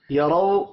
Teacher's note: را کے اوپر زبر ہے، را کو پر پڑھیں گے